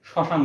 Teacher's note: আমরা ডাইরেক্ট শসান উচ্চারণ করি। অর্থাৎ ম এর উচ্চারণ এখানে হয় না